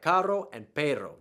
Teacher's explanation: your tongue actually flips up and touches the roof of your mouth for just an instant